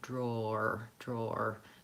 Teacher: Drawer. So we have to kind of move from DR, the blend, into the O diphthong